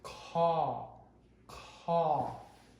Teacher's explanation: the qh is aspirated